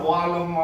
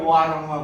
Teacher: लको उच्चारण इन्टर भोकालिक पोजिसनमा दुईटा स्वर वर्णको बिचमा पऱ्यो भने र हुँदो रहेछ। लिम्बूको र र ल एउटै हो तर र चाहिँ चेन्ज भएको आवाज हो, मूल ध्वनि चाहिँ ल हो।